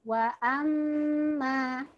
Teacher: Wa amma, ma-nya lebih pendek daripada mim bertasydidnya.